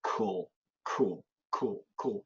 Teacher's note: But in daily English, cool, cool, cool, cool. The W disappears.